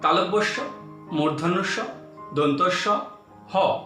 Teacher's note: এই বর্ণগুলি উচ্চারণের সময় শীষ দেওয়ার মতো এক প্রকার ধ্বনির সৃষ্টি হয় বলে এগুলিকে শীষ ধ্বনিও বলা হয়।